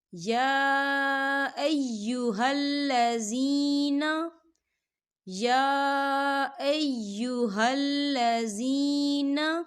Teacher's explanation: یا کے پر کھڑی حرکات بھی ہے اور اس پہ چھوٹی مد بھی ہے۔ 2 یا 3 حرکت کے برابر ہم اسے کھینچ کے پڑھیں گے